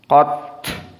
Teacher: kekhususan ayat ini dengan ta as-sakinah maka dibaca dalam keadaan al-hams. Qat harus ada jaroyan an-nafs.